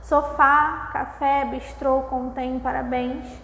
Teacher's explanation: Ou seja a sílaba tônica é mais forte por isso que é uma oxítona né